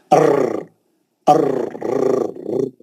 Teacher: उसके अंदर एक किस्म की तकरार है, अर्र अर्र, जो एक किस्म का जो आवाज उसका टकरा के रिपीट होता, उसको बोलते तकरार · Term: हुरूफ तकरार